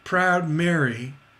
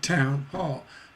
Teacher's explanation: you hear that two stresses in a row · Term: double stress